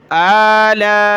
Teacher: हमज़ा को कम खींचना है लाम अलिफ को ज़्यादा खींचना है मद की वजह से